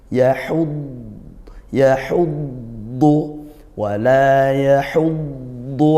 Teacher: makhrajnya dari sisi lidah atau tepi lidah ah ketika tasydid sukun dad ini punya sifat namanya istitalah memanjang di makhrajnya artinya apa dia dipanjangkan bunyi dnya yahud yahudu Wala yahudu Aa